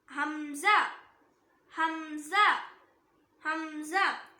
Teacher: இதுவும் சேம் ஹ மாதிரி தான், தொண்டையோட அடி பாகத்திலிருந்து வரணும். ஹம்சா ஹம்சா ஹம்சா.